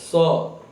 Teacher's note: जिसको आप दंत स कहते हैं उसका उच्चारण दांत से होता है